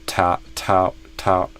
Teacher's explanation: the th in thousand kind of got stopped, came out a little like a t. Ta- Kind of a ta instead of a thou.